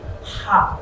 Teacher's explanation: এটা হবে হা, কণ্ঠনালীর মধ্যাংশ। এই কণ্ঠনালীর মধ্যাংশ থেকে হাটা বার হবে। · যদি এই হাওয়াটা বাইর হয় এই হা উচ্চারণের ক্ষেত্রে, তাহলে সঠিক উচ্চারণ, সঠিক মাত্রাটাই হলো হা হা। ঠিক কণ্ঠনালীর মধ্যাংশ থেকে উচ্চারণটা হবে, এবং খেয়াল রাখতে হবে যেন হাওয়া বাইর হয়। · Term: বড় হা